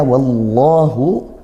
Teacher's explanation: Lafaz Allah didahului fathah dibaca tebal. tebal itu bukan memonyongkan bibir.